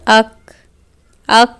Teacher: ہوا باہر آ رہی ہے یعنی کہ صفت ہمس بھی ادا ہو گئی. ایسے ہی اگر ہوا باہر نہیں آ رہی تو حرف مکمل ادا نہیں ہوا ہے.